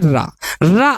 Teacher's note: बार खुलता है यथा बोलो रा र जीभ क्या होती है जीव की जो नोक होती है दो तीन बार इधर उधर खुलती है बंद होती है एक तरीके से टकराती है ठीक है जैसे रा रा आपका · मुख द्वार जीभ की नोक से शीघ्र ही बंद होता है और 2-3 बार खुलता है। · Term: लुंठित